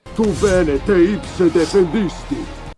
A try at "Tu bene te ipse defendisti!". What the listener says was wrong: I don't have any problem with that. Tu bene te ipse defendisti. Sounds pretty good.